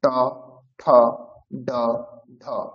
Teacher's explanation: তো ডিরেক্ট ন উচ্চারণ করতে পারবেন না, একটু কঠিন মনে হবে, সেই জন্য ট থেকে শুরু করতে হবে। ট হচ্ছে মূর্ধাতে শুধুমাত্র উচ্চারণ হবে